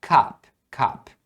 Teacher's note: eu tô acostumado a falar cap com o som de A mais aberto